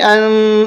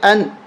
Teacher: فی ہا، حمزہ نون زبر ان، یہاں پر ہم غنہ نہیں کریں گے، ان اس طرح نہیں پڑھیں گے، اس لیے کہ نون ساکن کے بعد ہا حروف حلقی میں سے ہے، اس لیے ہم پڑھیں گے ان، غنہ نہیں کریں گے